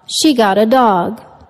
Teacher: happened with the sound of the focus word in sentence one the intonation went down to indicate the completion of the thought